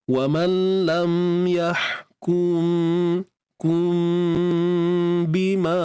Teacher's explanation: mim mati bertemu dengan ba, ikhfa syafawi. Tutup bibir mulut bersahaja.